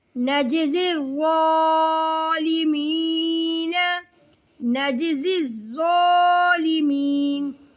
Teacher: زا کو سختی اور سیٹی کے ساتھ اور ظا کو موٹا کر کے پڑھیں گے